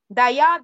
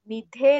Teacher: that ಧ ದಯ ದ is ಅಲ್ಪಪ್ರಾಣ ನಿಧೆ ಧ ಇಸ್ ಮಹಾಪ್ರಾಣ